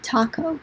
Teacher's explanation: English speakers will say taco. You can feel that puff of air.